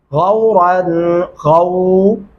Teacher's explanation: را کو موٹا اور پر کر کے پڑھیں گے